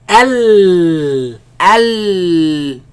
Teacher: The sound escapes from the sides.